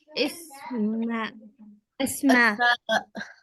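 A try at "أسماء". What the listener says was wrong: इसमा नहीं हो सकता, ऊपर हमजा, हमजा के ऊपर फतहा है, क्या बनेगा? अस्मा.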